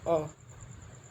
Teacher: इसका जो मुख जो है खुलने के आधार पे न ज़्यादा खुलता है न कम खुलता है, एक सेंट्रल में है, इसलिए इसे उदासीन और केंद्रीय में रखा गया है। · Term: केंद्रीय स्वर